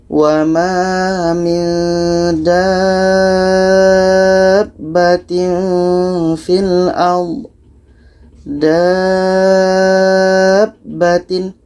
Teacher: ada tasydid ini mad lazim kilmi mutsaqqal cara bacanya tanaman ini kita panjangkan 6 harakat baru disambut dengan tasydid